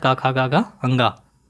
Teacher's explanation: कंठ ध्वनियाँ कावर्ग कहलाती हैं, अर्थात का खा गा गा अंगा